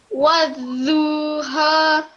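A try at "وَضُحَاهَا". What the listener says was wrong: Don't prolong the dhamma. That's dhamma. So don't prolong it. Wadhuha. One more thing, the ha. So wadhuha.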